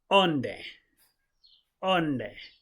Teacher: you just have to keep it light with a tiny nasal hum on the end